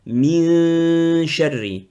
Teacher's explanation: Donc, ça sera qu'on appelle ikhfa, ça veut dire qu'on cache le noun, on garde juste le nazimon.